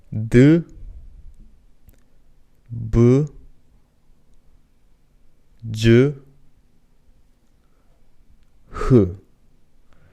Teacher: The commonality between all these 4 is that it includes a little bit of aspiratory sound. Aspiratory as in h sound added to it.